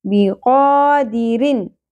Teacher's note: یہاں پر اظہار ہو رہا ہے کیونکہ آگے حروف حلقے میں سے عین آ گیا تو رن کلیئر کر کے پڑھنا ہے